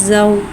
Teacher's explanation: वाव साकिन है, वाव साकिन से पहले ज़बर हो रहा है, वाउलीन हो रहा है, लिहाजा वाउलीन को बगैर खींचे बगैर झटके दिए नरमी से मारूफ पढ़ेंगे और वाउलीन को होठों की गुलाई के साथ अदा करके पढ़ेंगे